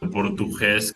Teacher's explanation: they also seem to have a ch sound for the G, like in the word português